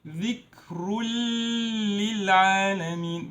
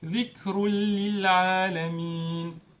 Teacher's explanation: this noon sound of tanween will be erased and we will mix them. ذكر للعالمين with no time, no Ghunnah. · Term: idgham